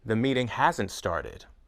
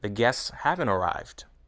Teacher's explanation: have and has are stressed however in negative contractions